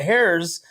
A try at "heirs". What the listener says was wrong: The H is silent. The H is silent.